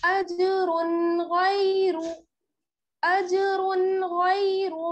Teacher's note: अज अजरुन अजरुन, रा पे आप देख रही हैं तनवीन है यानी दो पेश है, और उसके बाद क्या है गैरु में गैन, ये क्या है हुरूफ़े हल्के में से है, गैन जो है वो हुरूफ़े हल्के में से है, इस वजह से यहाँ पर क्या होगा इजहार